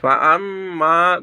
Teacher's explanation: ফাআম্মা গুন্না হবে ওয়াজিব গুন্না মিমের উপর তাদ্দিদ হওয়ার কারণে ওয়াজিব গুন্না হবে